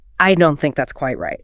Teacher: If you deliver that with a falling pitch at the end, a downward inflection, it sounds incredibly final. It sounds authoritative.